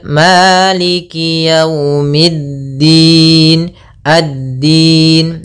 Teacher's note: berupa Alif lama maaf alif lam syamsiyah alif lam syamsiyah yaitu alif lam yang ditulis tapi tidak dibaca langsung ke huruf Dal